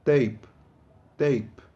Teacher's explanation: quando você diz p, não produz nenhuma vibração na sua corda vocal